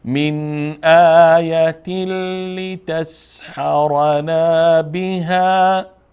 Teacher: بعد از تنوین لام آمد لام از جمله حروف ادغام هست